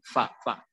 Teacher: bibir bagian bawah ini ketemu dengan gigi seri bagian atas yang di ujungnya